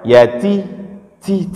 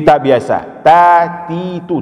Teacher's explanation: Yang penting ta pada yatim jangan terlalu berangin ya, jangan dibaca yati ti tapi ta biasa, ta ti tu tidak terlalu berangin.